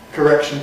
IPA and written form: kəˈrekʃn (correction)